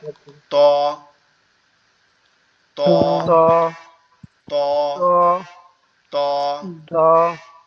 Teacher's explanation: জিহ্বার আগা সামনের উপরের দুই দাঁতের গোড়ার সঙ্গে লাগবে, লেগে উচ্চারিত হবে ত, ত, ত ত, ত ত, ত এভাবে।